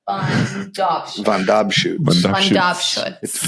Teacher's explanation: You put the emphasis on the middle syllable.